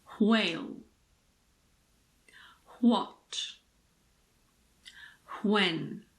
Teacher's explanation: some native speakers pronounce WH as wh, so it's like an HW.